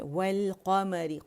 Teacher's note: قا موٹا ہے, میم باریک ہے, ری جو ہے یہ باریک ہے